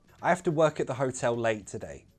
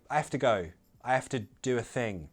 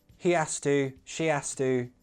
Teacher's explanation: I usually drop the H when it's I have to.